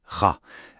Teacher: Un point, c'est un son Ra qui gratte un peu la gorge.